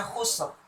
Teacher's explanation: Nah, ro yang ini kita berhentikan, kita wakafkan. Jadi ini juga dibaca dengan tebal ro-nya. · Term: ro yang tebal